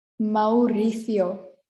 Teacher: we have two vowels next to each other so we are going to pronounce them separately so it sounds like i am joining them which i am